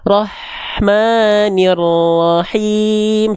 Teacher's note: Hak kecil punya sifat hams dan rokhwa. Jadi dia ngalir nafasnya, ngalir suaranya.